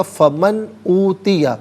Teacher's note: فا من اوتیہ، من میں نون ساکن ہے، اس کے بعد آپ دیکھیں اوتیہ میں حرف حلقی حمزہ آ رہا ہے تو نون ساکن کو یہاں اظہار کے ساتھ پڑھیں گے، اخفا یا غنہ نہیں کیا جائے گا۔